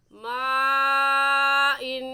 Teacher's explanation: इस वजह से इस मद को मद्दे मुत्तसिल कहेंगे اور اس کی مقدار 4 الف ہے. 4 الف کے برابر کھینچ کر پڑھیں گے اور ایسے پڑھیں گے ما ان.